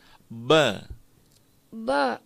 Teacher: Huruf ba-nya itu adalah bibir atas bertemu dengan bibir bawah.